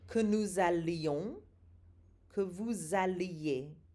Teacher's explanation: Did you hear the strong L sound? So those double L's there do not sound like a Y.